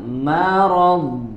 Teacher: di huruf dodnya jangan dipantulkan dan alirkan suaranya. Marad, ada suara yang mengalir, ya.